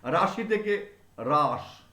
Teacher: হর্ষই আছে, র যোগ আ যোগ তালবস্য যোগ হর্ষই, রাশি। তা রাশি উচ্চারণ করতে গিয়ে আমরা প্রথমে যতটা শাসাঘাত দিয়েছিলাম সেটা ক্রমশ কমতে কমতে শব্দের শেষে গিয়ে আর থাকে না, ফলে সেই স্বরধ্বনিটার উচ্চারণ করা হয় না, ফলে সেই ধ্বনিটা লোপ পায়। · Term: অন্ত স্বরলোপ